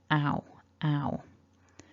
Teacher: with the mouth is a little more open ow ow so i bring my lips closer together as i glide into the second sound · So I bring my lips closer together as I glide into the second sound. Ow, ow. In terms of the tongue, it's not too high in the mouth. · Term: double vowels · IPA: /aʊ/